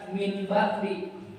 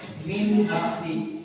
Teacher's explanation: Nah, jadi hukumnya itu, cara bacanya itu si nunnya ini, si nun matinya kalau ketemu ba tidak dibaca min bakti, tapi min bakti. Ya, huruf nunnya berubah jadi seperti suara mim mati